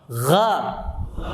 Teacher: Masukkan lagi ke tenggorokan atas, masukkan lagi, ada gesekan sedikit. Gha, hati-hati jangan monyong.